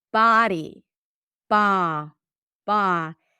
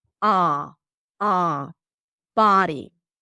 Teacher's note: So the tongue pulls back. It is It feels like a rounded sound because the sound resonates in the back but the lips are not rounded.